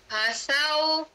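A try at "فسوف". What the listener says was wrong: Dia angin dia keluar lemah sikit tu. Kena kuatkan sikit. Fasaufa.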